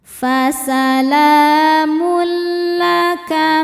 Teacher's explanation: Sebab ada tanwin dommah yang menghadapi huruf lam. Cara bacanya tanwin dommah dimasukkan ke huruf lam tidak disertai dengungan. Artinya cukup kita tekan salamul tanpa menahannya. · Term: idgham bila gunah, idgham bila gunnah